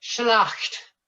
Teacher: So you sing the T, you start off with the L, the resonant consonant, and you end with the T